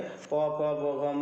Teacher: आप बोलिएगा तो वो दोनों ओठ आपस में टकराते हैं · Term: ओष्ठ